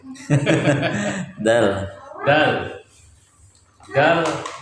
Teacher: Ujung lidah menempel pada dinding gigi seri bagian atas.